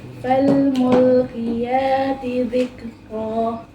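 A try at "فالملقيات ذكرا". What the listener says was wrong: Qafnya lagi. Kedepankan lagi soalnya. Maksudnya qiyati. Ulang.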